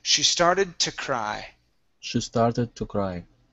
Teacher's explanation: use a t sound instead of to